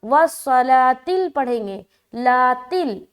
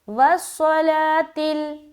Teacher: यहाँ पर हम वस्सलातिल पढ़ेंगे, लातिल, वाव को नहीं पढ़ना, वस्सलातिल, ता लाम ज़ेर तिल, लाम के ऊपर जो खड़ा ज़बर है सिर्फ वहाँ पर खींचेंगे